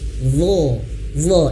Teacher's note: bukan karena bibir manyun, tidak, tapi pangkal lidah naik.